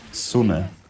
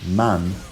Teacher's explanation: The word sune had this word-final unstressed vowel, and the word man didn't